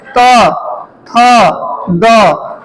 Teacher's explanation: जैसे त बोलते हैं, थ बोलते हैं, तो देखिए जीभ आपका दांत में स्पर्श होगा। त, थ, द सब में हो रहा है ना।